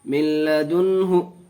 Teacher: نون ساکن کے بعد ادغام ارمنون کے 6 حرفوں میں سے لام آیا، بغیر گناہ کے پڑھیں گے.